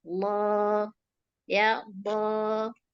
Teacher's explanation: Pangkal lidah kita naik, lidah yang paling belakang ini naik ya. Jadi bunyinya tebal, gema.